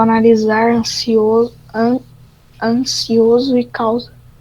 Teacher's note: e entre vogais o S tem som de Z